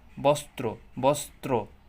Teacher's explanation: তো র বর্ণের উচ্চারণটা মেনলি র এর মতোই হয়, তবে যদি কখনো দেখেন যে র ফলাযুক্ত হয়েছে তখন একটু এটার উচ্চারণটা দ্বিত্ব স্বরের মতো হয়, মানে দুইটা স্বরের সাথে উচ্চারিত হওয়ার মতো হয়। আর যদি র ফলা যুক্ত ব্যঞ্জনের সাথে হয় তখন উচ্চারণটা মানে দ্বিত্ব উচ্চারণ তেমন একটা হয় না